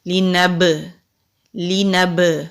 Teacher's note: انا جعلنا ما علی الارض زینۃ لہا لنبلوہم، لام کے نیچے زیر ہے، نون کے اوپر زبر ہے، با ساکن ہے، تو با ساکن ہو تو کلکلا ہوتا ہے، کلکلا کہتے ہیں آواز کے پلٹنے کو۔ لنب، لنب، یہ جو آواز پلٹ کے آ رہی ہے اس کو کلکلا کہتے ہیں۔